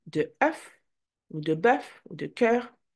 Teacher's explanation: the sound is located in between the A and the E. So you start with the A, and then you move to the A, and in the middle is okay?